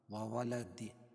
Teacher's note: وقفہ کی حالت میں یہاں دال پر قلقلہ ہوگا، وصل کی حالت میں نہیں